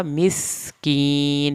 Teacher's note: سین کو سیٹی کی آواز کے ساتھ پڑھ کے کاف کو پتلا پڑھنا ہے